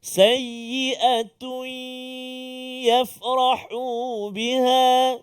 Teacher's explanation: Sayyi'atun. Bunyi tun ataupun tanwin itu masuk dalam ya berserta dengung 2 harakat. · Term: idgham ma'al ghunnah